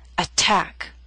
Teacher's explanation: Attack is a word with 2 syllables. Stress is on the second. Attack. So T, although in the middle of the word, is at the beginning of a stressed syllable.